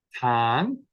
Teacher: if we have a one-syllable word in Cornish like for example con that word for fire there's probably a slight Rising intonation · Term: pitch accent